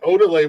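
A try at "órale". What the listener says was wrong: It's orale, not odele. There's no D in orale. Orale.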